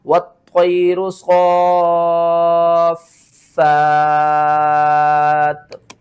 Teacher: دو زیر کو آپ نے ختم کرنا ہے، تا کو ساکن کرنا ہے، اس سے پہلے دیکھیں تو فا ہے، فا کو کھینچ کر تا کے ساتھ ملانا ہے